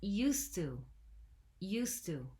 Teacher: We drop the D because the T sound is stronger, and so it becomes a single word